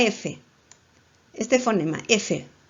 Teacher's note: cuando tú pronuncias la f tus dientes superiores se unen a tu labio inferior